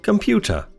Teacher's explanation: the two schwas sounds in the word computer depend for their quality on the sounds around them they're close in sound to each other but not identical the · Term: schwar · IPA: / ə /